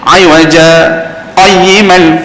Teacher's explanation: Kita boleh saktahkan dia, kita boleh berhenti seketika tanpa mengambil nafas.